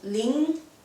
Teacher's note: your tongue does touch your palate like L, so it's more like L in English. But as we don't have R, we do use L sounds to replace R as well.